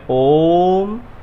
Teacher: ओ को खींचना है आपको, जो इसका स्वाभाविक उच्चारण है उसे 3 गुना उच्चारण आपको करना है, तो ये आपका प्लुत हो जाएगा।